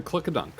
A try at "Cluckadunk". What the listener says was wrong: Not click-a-dunk. Cluckadunk. No, you said click.